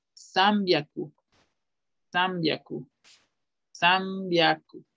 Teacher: cuando se junta una N y una B, inconscientemente pronunciamos una M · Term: sonido de una M